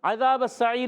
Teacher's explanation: ذال کو زا سے نہیں بدلنا، اس کو ذال کو کلیئر رکھنا ہے